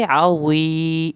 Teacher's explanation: आइन को हल्क से पढ़ेंगे